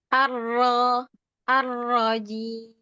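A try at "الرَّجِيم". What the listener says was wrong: Lagi kurang terbuka, kurang maftuh roknya. Dorong. Arrojim.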